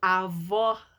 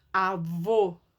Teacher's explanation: Avó aberto, avô fechado.